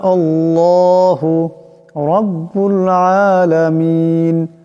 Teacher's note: হামজা লাম জবর আল লাম খরা জবর লা আল্লাহ হাফেশু আল্লাহু এখানে আল্লাহর লামের ডানে হামজার উপর জবর আসছে এই আল্লাহর লামকে মোটা করে পড়তে হবে